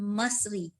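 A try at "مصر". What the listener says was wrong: Min baris bawah Misr. Kalau nak letak baris min Misra.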